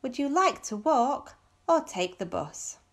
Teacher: A falling intonation, because we have choices here.